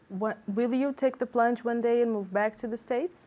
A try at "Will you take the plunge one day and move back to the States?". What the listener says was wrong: Okay, good, but do you hear intonation? Because I didn't hear any intonation. Do we want intonation? We want intonation, right?